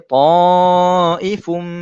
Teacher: Saya masukkan terus 100% tanwin tersebut ke dalam huruf mim. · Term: dengung